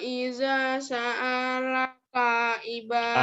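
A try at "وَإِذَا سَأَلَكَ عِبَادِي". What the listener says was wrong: A-nya nggak panjang. Wa idza sa'ala. Wa idza sa'ala. A-nya nggak panjang. Wa idza sa'alaka ibadi. Ba-nya panjang. Wa idza sa'alaka ibadi.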